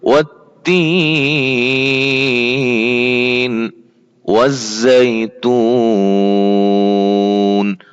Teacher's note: والزیتون پہ بھی لمبی مد کر سکتے ہیں وقف کی صورت میں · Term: بڑی مد